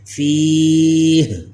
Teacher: ہا کا زیر ختم ہوگا لیکن ہا ختم نہیں کرنا، آخر میں ہا کی آواز باقی رہے